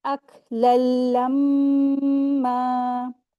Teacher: یہاں پر ادغام ہو رہا ہے، ادغام کامل کریں گے، ٹھیک ہے، غنہ نہیں کریں گے، ادغام کریں گے۔